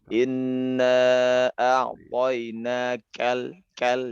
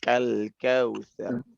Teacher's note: Keluarkan lagi huruf hamas pada ka ya, sifat hamas pada kaf. Inna a'tainakal kal ya, ada percikan angin ya.